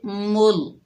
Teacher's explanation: मीम को अल्लाह के लाम से मिलाएंगे और अल्लाह का लाम को मोटा पढ़ेंगे